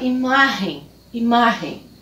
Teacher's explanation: com a sílaba tônica na penúltima sílaba